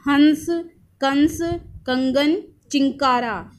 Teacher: इन शब्दों को बोलकर बोलकर देखोगे तो आपको पता चलेगा कि इनकी जो आवाज है वह नाक से होकर आ रही है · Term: अनुस्वर